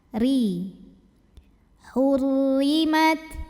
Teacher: Huruf ra dibaca secara tarqiq sebab baris ra-nya di bawah kasrah. Maka bacanya tipis, pangkal lidah datar.